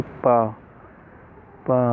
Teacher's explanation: ओष्ठ व्यंजनों के उच्चारण में दोनों ओंठ परस्पर स्पर्श करते हैं तथा जिह्वा निष्क्रिय रहती है